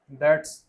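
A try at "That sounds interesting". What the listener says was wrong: दैट, S आएगा ही नहीं, दैट sounds interesting, दैट sounds interesting.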